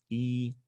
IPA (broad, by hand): ɪ